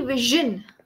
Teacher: or Vision Vision Vision yes it is actually Vision okay but if you notice carefully the sh and J sound are mixed so instead of completely eliminating the sh sound and making it